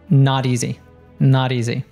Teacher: And then in not, we have another American tea. So it's T between two vowels where it turns into a D sound.